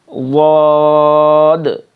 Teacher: یہ ضاد بالکل گہرا سا اور موٹا سا ہوتا ہے